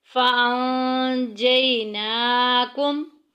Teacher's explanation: نون ساکن کے بعد جیم آ گئی ہے۔ جیم جو ہے یہ اخفا کے قواعد میں سے ہے، یہاں پہ چھپا کے پڑھیں گے، ہائٹ کریں گے۔